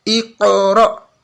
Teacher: Iqra, tapi sambung. Iqra, pantulan qaf ini, kol-kolannya qaf sampai ke ro.